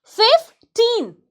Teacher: 15, stress on the second syllable.